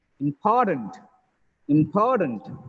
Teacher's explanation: That is why it becomes tunt, not then tent. TANT has become tunt because of the previous syllable, stress on the previous syllable.